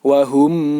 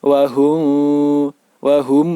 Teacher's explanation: bibir bawah menempel Wah Um ini yang menempel wahum m sehingga ketika bibir atas dan bibir bawah menempel bunyinya menjadi Bunyi seperti member tasydid